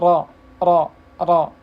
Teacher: ujung lidah pada posisi gusi dua gigi seri atas yaitu huruf ro